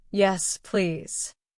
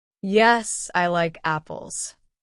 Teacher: When I answer, it goes down.